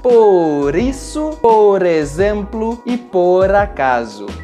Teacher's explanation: Quando nós temos duas palavras e a primeira termina com a letra R e a segunda começa com uma vogal, para falar um pouco mais rápido, nós juntamos as duas palavras como se fossem uma palavra só. Por isso, nós substituímos o som do R no final da palavra pelo som do R antes de uma vogal.